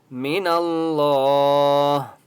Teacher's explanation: اللہ کا نام موٹا ہوگا کیونکہ اس سے پہلے نون کے اوپر زبر ہے